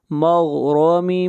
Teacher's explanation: را کو موٹا پڑھیں گے، را کے اوپر زبر ہے۔ مغرم، ادغام مع الغنہ۔